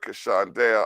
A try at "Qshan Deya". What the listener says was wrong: Just stress the Q more. Qshan.